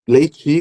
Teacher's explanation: Aqui onde eu moro, nós falamos leite com o leiti com o final I.